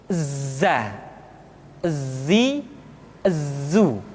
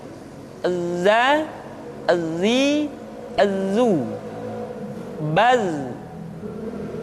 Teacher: Tetapi ingat, huruf za bersifat al-jahr. Artinya, ketika kita mengucapkan huruf za, suara kita mengalir, akan tetapi nafas tidak boleh mengalir